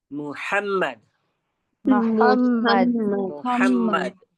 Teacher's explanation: ہ بیچ والے حصے سے حلق کے ادا کریں گے